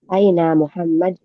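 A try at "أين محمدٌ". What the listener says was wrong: Aina Muhammad ya, atau Muhammadun ya, dibaca semuanya Ummahat karena untuk belajar. Jangan disukunkan. Aina Muhammadun.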